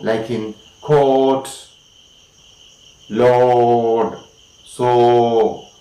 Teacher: Next rounded vowel is the long sound O